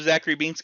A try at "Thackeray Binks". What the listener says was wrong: Yes, those are separate, and I think it's actually with a T. I think you're saying. I think it is Thackeray. T-H-A-C-K. It's Thackeray Binks.